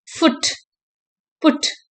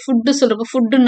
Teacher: And it is slightly back, கொஞ்சம் பின்பக்கமா எடுத்திருக்கு. the lips are rounded and the sound is short. இது வந்து short vowel தான், பட் lips பாத்தீங்கன்னா நல்ல ரவுண்டா இருக்கும்.